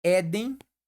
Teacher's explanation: são palavras cuja sílaba tônica né se posicionam na penúltima sílaba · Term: paroxítona